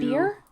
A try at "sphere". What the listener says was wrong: You keep saying spear with a P?